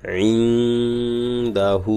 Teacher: এখানে ঠিক তায়ের মাখরাজ যেভাবে উচ্চারণ হয়েছিল ঠিক এখানেও নুন সাকিনের পরে দাল আসছে, দালের মাখরাজে গিয়ে এই গুণাটা হবে